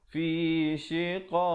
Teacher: kalau kita pilih untuk waqaf, kita berikan pantulan pada huruf qaf